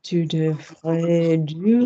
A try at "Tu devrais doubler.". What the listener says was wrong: No. What did I say earlier about the first verb? Did I say we had to stress the first verb? No. Tu devrais doubler.